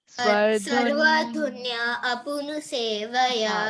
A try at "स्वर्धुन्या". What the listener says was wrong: नहीं सर्व नहीं बेटा, इट्स स्वर स्वर्धुन्या।